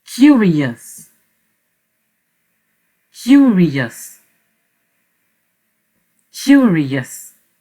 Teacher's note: ici, nous percevons quand même légèrement la diphtongue OUA. OUA.